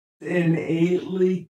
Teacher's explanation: The speaker there has put hard attack on the stressed vowel of ‘innately’